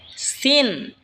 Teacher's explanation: সিন জিহ্বার আগা সামনের নিচের দুই দাঁতের আগার দিকে লাগা উচ্চারণ হবে সিন। এই ঝা যেখান থেকে উচ্চারণ হয়েছে সেখান থেকেই সিন উচ্চারণ হবে।